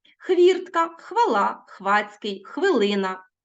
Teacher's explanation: у власне українських словах на місці де ніби хочеться вимовити ф стоїть хв